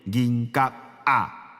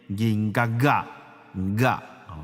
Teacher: GM▁大家好。啊对吼，今仔日我拢袂记咧参大家拍招呼、小借问，足无礼貌的。无要紧，哈，继续练。讲一颗银用一粒汗来换，你想安怎打拼？人生若问我，应该用啥来换？伊讲一箍银用七粒汗来换，你想安怎打拼？人生路安怎行？拢伫留予我一个。安怎行？拢伫留予我一个。拢伫留予我一个银嘎嘎。哦，对哦，说明一下，银嘎嘎这3个字。有当时啊，有人感觉就歹念吼，因为它的那个角银角角还好，角 角啊之间呢会有一个连音啊 ，所以我们不会念银角啊，我们会念银角角噶啊，会有一个浊音在中间，